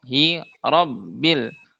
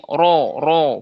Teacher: Nah, biasanya untuk huruf ro itu kesalahan yang terjadi dia kurang tebal. Padahal ketika ro berharakat fathah dia dibaca tafhim tebal. Yaitu dengan menaikkan pangkalpangkal lidahnya dinaikkan